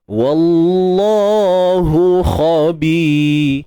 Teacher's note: Untuk kha kita baca tebal juga. Kha ni isti'la, kekal tebal selama-lamanya.